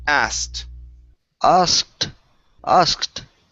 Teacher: So it's asked. Go straight to a T.